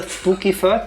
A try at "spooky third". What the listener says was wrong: THP does not become an S. It's not Suki.